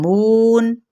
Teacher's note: नहीं निकालनी, हरूफे मद्दा है और साथ में ये क्या है, वाव मद्दा कौन सा है, ये जौफ़े दहन से निकलता है, ठीक है, मुँह के खाली हिस्से से